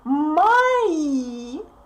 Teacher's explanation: Unstressed O represents А sound.